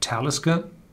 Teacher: Talisker is pronounced on the first syllable because this is not a Gaelic name, it's a Nordic name.